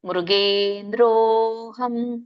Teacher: ಅವಗ್ರಹ ಇದೆ, ಅಲೋಪ ಆಗಿರೋದ್ರಿಂದ ಎಳಿಬೇಕು.